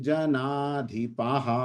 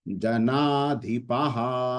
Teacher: जब विसर्ग आते हैं तो ह का उच्चारण होता है वहां पर, ये जो दो बिंदियां पीछे है संस्कृत में इसको विसर्ग कहा जाता है, विसर्ग।